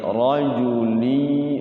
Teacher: ra-nya dibaca tafkhim ya, tebal, jangan ra.